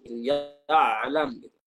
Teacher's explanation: Dengan suara yang tebal pada ya dan ain. Ya alam, tebal. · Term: mufakhamah